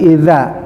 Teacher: I ya, i bukan i a i idza za ya, za digigit lidahnya sama dengan sa za zo idza ya, bukan iza tapi idza ya. Harus selalu lidahnya keluar, bukan iza, bukan sama dengan za tapi idza.